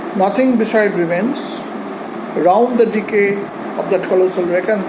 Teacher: There is a short stoppage after nothing beside remains. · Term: caesura